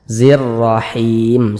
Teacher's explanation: ketika kita membacanya membaca huruf rnya ini pangkal lisan kita itu naik terangkat ke atas huruf rnya kita tebalkan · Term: dibaca tebal